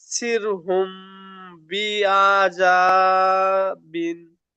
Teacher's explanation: মিম সাকিনের পরে বা এসেছে, তাই মিমকে এক আলিফ পরিমাণ গুণনা করে পড়তে হবে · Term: ইকফায়ে সাফাবি